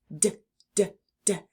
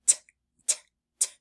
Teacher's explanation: Touch your tongue to the back of your teeth while also releasing a puff of air but letting the sound come from your throat. The D sound is voiced, which means we will feel our throats buzzing. · the D sound is very similar to the T sound that we learned earlier. T as in turtle except for the t sound is not voiced. So when we make that sound, we don't feel any buzzing.